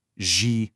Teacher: See how there's a depth to it? That's because my tongue is curled way back. Now you try. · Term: retroflex